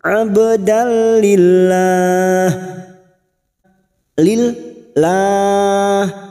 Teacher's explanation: Abdalillah, lillah. Kita panjangkan 4 harokat mat arid li sukun bertemunya mat dengan huruf hidup yang dibaca waqaf. Mat arid li sukun kita konsisten 4 harokat kita panjangkan. · Abdalillah, abdal fathatan win pada huruf dal, fathatain atau fathatan win yang bertemu huruf lam namanya idgham bila gunnah, hanya masuk tanpa mendengung